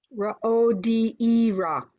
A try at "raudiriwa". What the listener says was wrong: No, there's a R-I there. Raudiri.